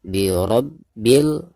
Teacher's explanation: Nah, ketika membaca ro, maka di sini dihukumi ro tafkhim atau ro yang dibaca tebal karena ro di sini berharakat fathah ya.